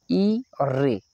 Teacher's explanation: अग्र स्वर पूछा है यानी जिव्या का अगला भाग कार्य करें तो यह होते है हमारे ई और रे इनसे हमारे अग्र